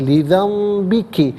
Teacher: نون ساکن ہو یا تنوین ہو، اس کے بعد با آئے تو نون ساکن ہو یا تنوین ہو، اسے میم سے چینج کر کے میم کی آواز کو غننے کے ساتھ ادا کرتے ہیں۔ لذنبک، یہاں رکیں گے تو لذنبک پڑھیں گے۔